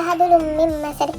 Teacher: ada dhammah tanwin bertemu dengan huruf mim, yaitu hukum bacaannya adalah idgham bi gunnah yang artinya mendengung